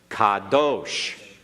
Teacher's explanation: ah as in the English word father not pronounce it right make sure you get that ah in there very clearly don't shorten it because it sounded like you were making a short half vowel